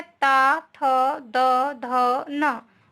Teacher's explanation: ये ता वर्ग के अंतर्गत आते हैं और इनका उच्चारण दांतों के द्वारा होता है, इसलिए इन्हें हमें दांत का उच्चारण स्थान कहते हैं।